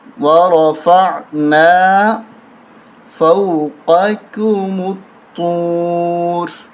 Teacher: طا موٹی ہوگی اور را بھی موٹا پڑھیں گے